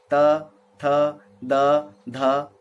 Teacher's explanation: दंत्य ऊपर के दांतों का या ऊपर की दंत पंक्ति का स्पर्श जब जीभ करे तो उन्हें दंत्य व्यंजन ध्वनि कहते हैं